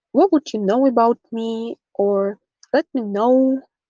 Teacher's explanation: the T sound that is disappearing is called a held T, a T that appears before a consonant. And one of the ways to pronounce it is with a glottal stop.